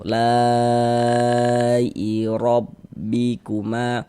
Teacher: Huruf ra memiliki harokat fathah, maka dibaca tabkhim, dibaca tebal. Jadi dengan menaikkan pangkal lidah kita ketika kita mengucapkannya. Kemudian ma dibaca panjang, ini mad tabi'i.